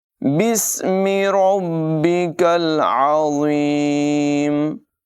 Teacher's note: الف کو نہیں پڑھیں گے بلکہ با کو سین سے ملائیں گے،